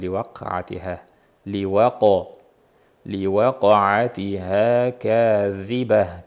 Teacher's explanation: Li waqo dagi qofni qalqalasiga e'tibor beramiz. Eng ko'p uchraydigan kamchilik li waqa'atiha bo'lib qoladi.